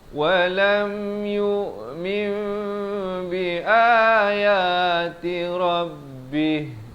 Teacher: Iqlab kita menukar daripada bunyi nun kepada bunyi mim. Daripada min jadi mim, 2 harakat.